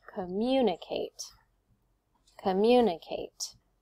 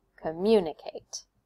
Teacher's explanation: you can hear it goes up on the mu right on the second syllable